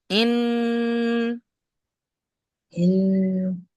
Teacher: গুন্না করতে হবে, আওয়াজটা ওয়াজিব নাকের মধ্যে চেপে ধরতে হবে।